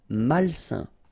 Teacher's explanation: A-I-N together, it's a nasal and it's un.